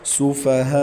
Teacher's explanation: سفہاء، ہا سینے سے ادا کریں گے، ہا کے اوپر بڑی مد ہے، ہا کے بعد الف مدہ کے اوپر بڑی مد ہے، 5 الف تک کی اس کو کھینچیں گے اور اس کے آخر میں وقف بالاسکان کریں گے، کیونکہ آخری پیش کو ہم ساکن کر رہے ہیں.